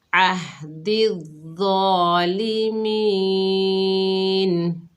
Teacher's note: وقف کی حالت میں نون کا زبر ختم ہو گیا، نون ساکن ہو گئی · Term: وقف بالاسکان